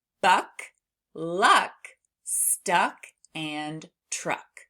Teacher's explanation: it happens in the back of our mouth, you have your tongue at the back of your mouth and it's a stop sound, meaning we can't stretch it. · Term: C- sound